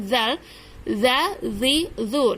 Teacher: ujung lidah ditempelkan di ujung gigi seri atas